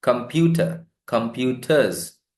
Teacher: R sound is not produced, that becomes a schwa in British accent